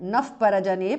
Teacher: visarga changes to upadhmaniya